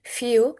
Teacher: when a consonant comes before the long goose vowel, it often gets a ye sound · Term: y sound